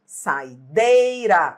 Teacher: Esse I de saideira não é a sílaba tônica